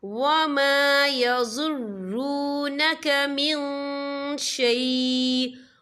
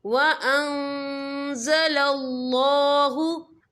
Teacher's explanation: इल्ला अनफुसहुम वमा यज़ुर्रूनक मिन शैء, या देखिए वमा यज़ुर्रूनक मिन, यहाँ नून साकिन है, नून साकिन के बाद जो है शीन आ रहा है और शीन जो है इक्फा का वर्ड है, तो हम यहाँ इक्फा करेंगे, नून साकिन की आवाज़ को नाक में छुपाएंगे